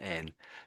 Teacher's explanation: with an N, you're lifting your tongue at the front